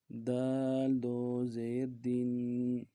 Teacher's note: تنوین ہے، تنوین کو غنہ کریں گے ، ایک الف دال میں کھینچیں گے، دال دو زیر دین،